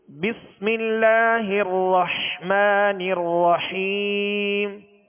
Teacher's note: بس میں سین کی آواز کو سیٹی کی آواز میں واضح کریں گے، سیٹی کی آواز اس میں پیدا ہوگی